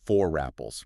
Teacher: If a non-rhotic word ending in R is immediately followed by a word starting with a vowel, the R is resurrected to prevent those two vowel sounds from awkwardly clashing. So it literally sounds like four apples. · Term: phonetic bridge, linking R